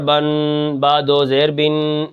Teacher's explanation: یہ جو آخری میں ناک میں آواز جاتی ہے یہ تنوین کی آواز ہے